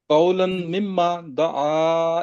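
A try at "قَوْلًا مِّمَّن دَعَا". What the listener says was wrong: ممن، قولم کو ممن کے ساتھ ملا ہے نا، قولم ممن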